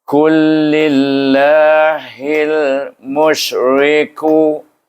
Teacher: Kul, iaitu idgham, masukkan lam pertama kita tak baca, terus baca kepada lam yang kedua, ditasydidkan huruf kaf itu kepada huruf lam. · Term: idgham mutamatsilain